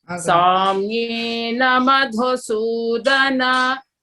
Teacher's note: Don't elongate Samyena. There is no bar on top of I, N-A. You know, it's Haswa, short vowel.